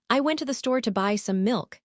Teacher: The stressed words tell the story: went, store, buy milk.